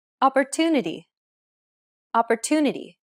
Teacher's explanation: The stressed syllable to in opportunity is pronounced longer than all the other syllables. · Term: stress-timed language